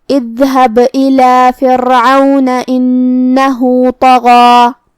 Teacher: آخری میں یہاں با پہ جزم ہے تو با کا حکم ہوا قلقلہ، ہمیں با کو ہلاتے ہوئے یہ کلمہ کو ادا کرنا ہے۔ کلمت فرعون میں یہاں جو کہ را پہ جزم ہے تو را کو ہلکی آواز میں مطلب ترقیق سے پڑھنا ہے کیونکہ اس سے پہلے والے حرف کے نیچے زیر ہے۔ · کلمت اذهب میں یہاں شروعات میں حمزہ قطع ہے تو ہمیں حمزہ کو ظاہر کرنا ہے۔ آخری میں یہاں با پہ جزم ہے تو با کا حکم ہوا قلقلہ، ہمیں با کو ہلاتے ہوئے یہ کلمہ کو ادا کرنا ہے۔